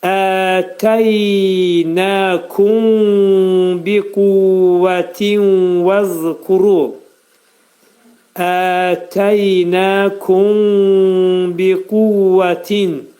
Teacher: Mim hərfi burada ixva olacaq. Mim bəyə yetişir. Və dodaqlar biraz açıq vəziyyətdə qalacaq. Mimi bəyə ixva edirik.